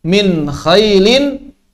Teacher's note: Jadi jangan mentasdid nun. Berarti di sini jangan dilama-lamakan. Jangan dilama-lamakan nunnya. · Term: nun idhar